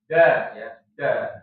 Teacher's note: Ujung lidah menyentuh pangkal langit. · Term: huruf dal